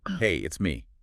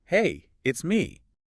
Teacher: Hey, up it's me down. A little up then down curve like a little musical phrase. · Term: rise fall pattern